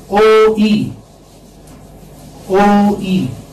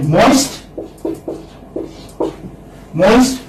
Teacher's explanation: When you say E, then your jaws are closed. So you move from open to the closed position. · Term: diphthong